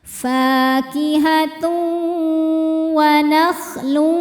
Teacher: Selanjutnya ada hukum idgham bighunnah karena ada tanwin dhommah menghadapi huruf waw. Cara bacanya tanwin dileburkan ke waw disertai bunyi dengung. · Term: idgham bi gunnah